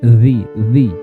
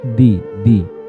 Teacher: makhrajnya yaitu ujung lidah dengan ujung gigi seri atas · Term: huruf dzal